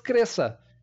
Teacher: Mas se eu falar direto, sem dividir por sílabas, cresça. Eu não pronuncio esse C, eu pronuncio um S